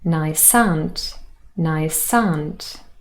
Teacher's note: the consonant s joins with the following vowel in the next word · The s from nice joins with the next word, aunt, and becomes sant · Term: linking sounds